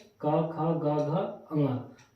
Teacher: कंठ कंठ से का वर्ग बोले जाते हैं